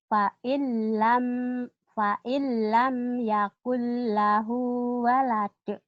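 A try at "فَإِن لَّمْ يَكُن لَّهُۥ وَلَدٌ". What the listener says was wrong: fa'ilam yakun lahu walad, segera ya, jangan dicicil, jangan walad, jangan walad, segera. Segera ya. Qalqalahnya jangan dicicil.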